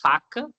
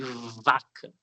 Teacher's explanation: V é vozeada. Os dois saem do mesmo lugar entre o lábio e o dente.